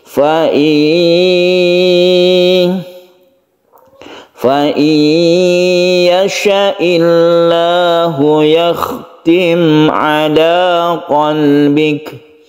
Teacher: Nun mati ini melebur ke ya sehingga menyebabkan ada tasydid. Jadi tasydid ini adalah bentukan dari idgham bi gunnah.